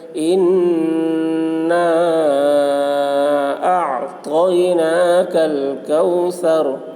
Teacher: را کے زبر کو حالت وقف میں جزم سے بدل کر پڑھیں گے